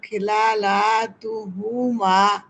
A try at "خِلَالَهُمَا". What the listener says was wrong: খিলালাহুমা তা নাই তো মা তা নাই